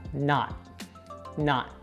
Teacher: If you say it slower and with emphasis, the not has a stop T. So it sounds like not, not.